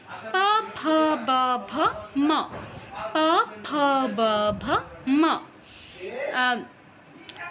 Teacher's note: তারপর প বর্গ। প বর্গের অক্ষরগুলোর উচ্চারণ হচ্ছে উষ্ঠে।